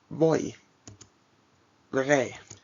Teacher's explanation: The Y, when the word final acts as a semivowel. That is, it sounds similar to that of an I.